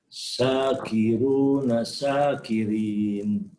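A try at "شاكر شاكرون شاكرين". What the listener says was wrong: untuk latihannya huruf di bagian belakang dibaca mati. Syakir, syakirun, syakirin. Untuk latihannya begitu, dibaca mati.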